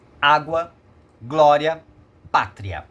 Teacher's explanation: ela cresce né de uma quase vogal para uma vogal e uma mais fraca para uma mais forte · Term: ditongo crescente